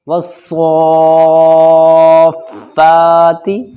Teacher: اب یہاں جائیے، صاد کے اوپر کھڑا زبر ہے، کھڑا زبر الف مدہ کے برابر کھنچتا ہے، تو حرف مد ہوا یہاں پر، یہ صاد حرف مد ہوا۔